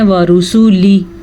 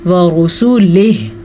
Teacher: ہا کی آواز وقف کے ساتھ آنی چاہیے۔ وہی بات، اکثر وقف کرتے ہوئے آخری حرف کو چھوڑ دیتے ہیں، یعنی کہ پڑھتے ہیں وَرُسُولِهِ، نہیں، ہم نے پڑھنا ہے وَرُسُولِهِ۔